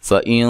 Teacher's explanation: یہاں نون ساکن کا اخفا مع الغنہ ہے، موٹا اخفا ہے، نون ساکن اور تنوین کے بعد حروف مستعلیہ میں سے کوئی حرف آ جائے تو وہاں موٹا اخفا کرتے ہیں۔